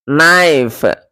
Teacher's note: But after the vowel shift, the K became silent and E turned to the diphthong I.